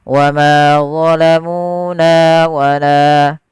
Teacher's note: na la keempat keempat kata ini wajib sama panjangnya wamuna wala karena dia hukumnya adalah mad thi'i dan dia perlu dipanjangkan sepanjang dua harakat